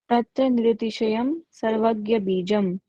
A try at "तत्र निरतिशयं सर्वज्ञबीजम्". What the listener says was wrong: Good.